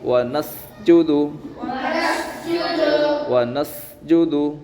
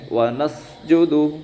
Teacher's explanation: سین میں سیٹھی ضروری ہے